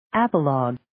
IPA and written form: 'æpə,lɔːg (Apologue)